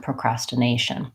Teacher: Then to add procrastination, I have a different syllable stress. Then my nay gets stressed.